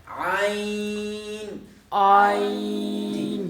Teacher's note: جہاں سے ہم نے ایک حرف پیچھے پڑھا تھا ہا، ہا جہاں سے ادا کیا ہے سیم وہی مخرج ہے، وہاں سے ہم نے عین ادا کرنا ہے. یعنی وسط حلق جو ہے وہ ہا کا مخرج تھا، تو عین کا بھی وسط حلق ہی مخرج ہے